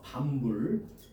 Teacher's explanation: 비읍은 비음, 니은, 미음 앞에서 미음으로 바뀌었죠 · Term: 비음화